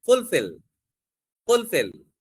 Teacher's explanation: fulfill is a verb, so stress will be on the second syllable